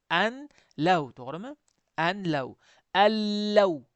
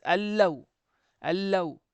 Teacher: G'unna qilmayapman. Allaw qilmayapman. Allaw oddiy. G'unnasiz.